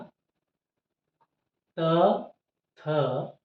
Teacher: ಹಲ್ಲಿಗೆ ನಾಲಿಗೆಯು ಸ್ಪರ್ಶ ಆಗುವುದರ ಮೂಲಕ ಈ ತ ವರ್ಗದ ಅಕ್ಷರಗಳು ಉತ್ಪತ್ತಿಯಾಗುತ್ತವೆ ಇಲ್ಲಿ ಮೇಲ್ದವಡೆಯ ಹಲ್ಲಿಗೆ ನಾಲಿಗೆಯು ಸ್ಪರ್ಶ ಆದಾಗ ಈ ತ ವರ್ಗದ ಅಕ್ಷರಗಳು ಉತ್ಪತ್ತಿಯಾಗುತ್ತೆ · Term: ದಂತ್ಯ ಅಕ್ಷರಗಳು